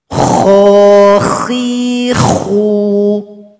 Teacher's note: ketika membacanya, suara kita harus hamas. Artinya, suara kita harus berisikan angin atau nafas.